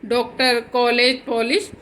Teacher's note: ओ अंग्रेजी की ध्वनि है, इसे ए और ओ के मध्य की ध्वनि के समान उच्चारित करते हैं। इसके ऊपर जो चंद्र है का चिन्ह लगता है, जैसे जब हम इसको लगाते हैं तो इसका उच्चारण ओ की तरह करते हैं, जैसे डॉक्टर, कॉलेज, पॉलिश आदि।